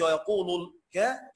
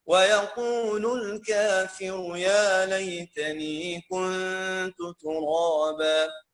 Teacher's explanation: عشان الكاف حرف ترقيق والالف تتبع ما قبلها تفخيما وترقيقا